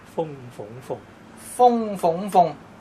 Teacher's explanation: 係咪風個音高啲啊？風，相對鳳係低少少，鳳又再低少少。